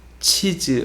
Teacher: 이, 발음은 고모음이라고 해서 턱이 닫힌 소리거든요. 그리고 즈는 파차름이라고 해서 파열음과 마찰음이 같이 나는 소리인데 가장 높은 위치에서 소리가 나게 됩니다.